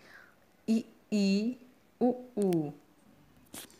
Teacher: जीभ तालू की ओर ऊपर उठ जाती है तथा मुख और जीभ के बीच दूरी बहुत कम रहती है, ऐसी स्थिति में जिन स्वरों का उच्चारण होता है उन्हें संवृत स्वर कहते हैं।